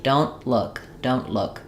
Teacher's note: because that T is followed by the consonant sound, you're probably going to have an unreleased T.